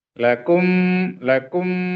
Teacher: Mim yang mati itu atau mim sukun itu terjadi karena bertemunya dua bibir ya.